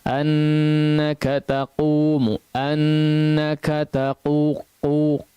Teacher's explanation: pengucapan huruf qaf dalam kondisi dhammah memang tidak terlalu nampak ya